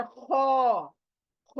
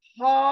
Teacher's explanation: एक लेटर ख हलक के ऊपर से आता है और एक लेटर ह ह नीचे से आता है